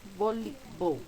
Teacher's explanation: La que se pronuncia más fuerte es li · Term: sílaba tónica